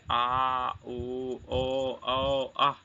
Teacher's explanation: पश्च स्वर जो जीभ के पीछे के हिस्से से निकले, जैसे आ, ऊ, ओ, औ, अ।